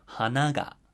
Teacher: like it's going to be a flat pitch accent word but you add the particle GA and you hear the drop after Han